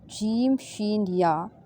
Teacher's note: یہ زبان کے تالو سے، یعنی تالو کے درمیان سے ادا ہوتا ہے